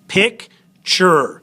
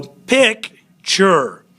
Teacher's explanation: Pick has the accented syllable. Ture has the unaccented. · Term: unaccented final syllables